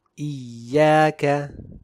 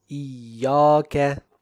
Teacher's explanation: the Tarqeeq of Ya in this word would automatically extend to the sound of the Alif Madd that follows it